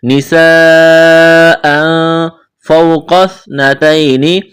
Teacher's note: واو ساکن سے پہلے زبر، واو لین ہے، بغیر کھینچ کے پڑھنا ہے، قاف کو موٹا کرنا ہے، سا کے ساتھ ملانا ہے، پلس کرنا ہے۔